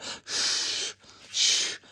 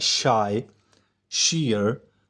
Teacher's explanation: तो उस जगह से जो आवाज़ निकलती है वो कहते हैं post alveolar. So the tip of the blade of the tongue approaches the rear part of the alveolar ridge.